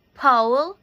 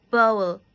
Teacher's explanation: pe and be are sound from both upper and lower lips and if you say pe there is no vibrate when you produce the sound but when you produce be there is a vibration